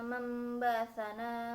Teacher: Mamba'atsana terdapat hukum bacaan iklab sebab nun mati bertemu dengan huruf ba, cara membacanya suara nun mati dirubah yang asalnya n menjadi m.